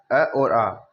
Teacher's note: अ और आ का उच्चारण किया जाता है कंठ से।